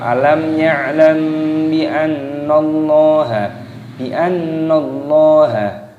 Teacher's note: mim sukunnya bertemu dengan huruf ba, ini hukumnya dibaca ikhfa syafawi, jadi dibaca samar